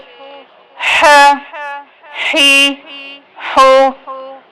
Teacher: حا کو بھی بالکل گلے کے درمیان سے اور بالکل صاف آواز سے ادا کرنا ہے